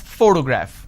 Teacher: I'm stressing on the first syllable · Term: word stress